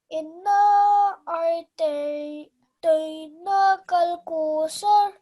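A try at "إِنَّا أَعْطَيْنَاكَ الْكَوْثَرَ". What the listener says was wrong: Okay, and remember to stretch the na out for 2 seconds because of the vertical fatha. Inna a'tayna. Okay, kal kawthar.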